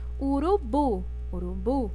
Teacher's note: O bu é a sílaba mais forte, é a sílaba tônica